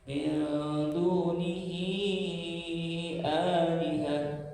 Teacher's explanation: bacaan panjang di sini adalah kasrah panjang bertemu dengan alif di kalimat yang lain. Apabila hukum silah bertemu dengan hamzah atau jelas dua-duanya tampil ketemu alif atau hamzah dalam satu kalimat, ya, atau di kalimat yang lain, maka dibaca panjang. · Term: mad silah qawilah